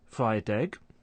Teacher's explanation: there's linking of a final consonant sound to a following vowel sound